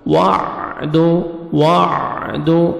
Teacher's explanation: هَذَا الْوَعْدُ، واو پہ اپنے ہونٹ گول کرنے، عین کو اپنے صحیح مخرج سے ادا کرنا ہے تاکہ حمزہ میں عین مکس نہ ہو